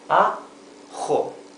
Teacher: It's rougher than the English H.